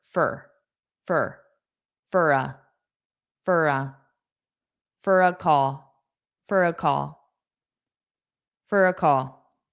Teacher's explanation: So notice for will often be just fur